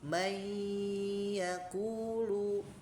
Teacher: May masuk hidung gitu ya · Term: idgam bigunah